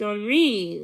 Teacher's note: pronounced Henri, with the accent on the second syllable